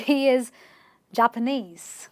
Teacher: you're stressing on the ESE, which is the suffix itself